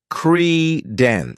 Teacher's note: this word has two syllables and the stress is on the first syllable